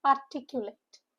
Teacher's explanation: Four syllable word with a stress on second syllable.